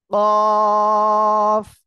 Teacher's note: এই অক্ষরটা জিহ্বার গোড়া তার বরাবর উপরে তালুর সঙ্গে লাগিয়ে উচ্চারণ হবে।